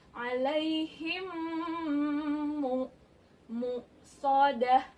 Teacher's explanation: Hukumnya idgham mutamasyilain atau disebut juga idgham mimi karena huruf mim bertemu mim. Idgham mimi. Bacanya kita dengung sampai 3 harakat.